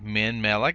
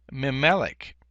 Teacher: the noon of the preposition min assimilates into the first consonant of the noun to which it's prefixed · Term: assimilated noon